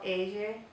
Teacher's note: make sure that you make the Y sound instead of the L sound